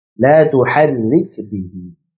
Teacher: Getaran pada kasrahnya antum lembutkan sedikit ya.